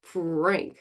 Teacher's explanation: the lips are protruded and rounded and they're still able to produce the R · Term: PR blend